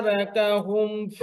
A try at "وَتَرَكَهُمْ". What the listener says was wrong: রাকা, ওয়াতা, এখন আবার ওয়াতা রাকা হয়ে গেছে, ওয়াতারাকা, রাকা, রাকা,